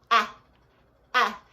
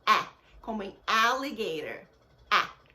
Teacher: É um som de E com a boca aberta no A. Então é A, como em alligator. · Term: som curto